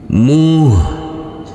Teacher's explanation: huruf ha tidak boleh dipantulkan karena ini bukan bacaan Qalqalah